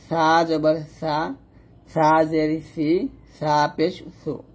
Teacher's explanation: সা হবে জিহ্বার আগা উপরে দাঁতের আগার সঙ্গে লাগিয়ে, সা পাতলা হবে